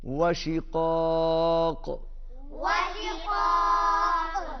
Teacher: व शिक़ाक़, क़ाफ पर भी कलकला होगा